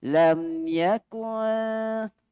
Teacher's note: Sebab tu dia sembunyikan tanda mati. Dan disembunyikan bunyi nun mati tu. Dia tidak jelas yakun. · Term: ikhfa